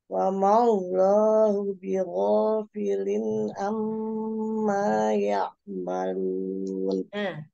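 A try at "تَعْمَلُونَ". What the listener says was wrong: Ta, bukan ya. Ta'malun.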